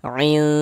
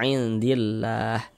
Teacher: Jangan kita baca in jelas begitu seperti izhar jangan tapi disamarkan in kemudian didengungkan. Jadi di bagian inya itu suaranya itu kita tahan ya kita panjangkan sebentar sepanjang dua harakat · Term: ikhfa hakiki